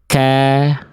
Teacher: Nah, kalau kaf dia ke sini ke langit-langit antara langit-langit yang lunak dan keras tuh perbatasan. Sehingga kalau kaf dia keluar percikan nafas. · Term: huruf kaf